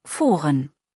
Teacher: Mit U, Lippen nicht so rund.